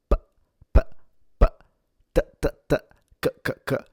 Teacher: a unvoiced sound like the p, p, p, t, t, t, k, k, k does not use the vibration of your vocal cords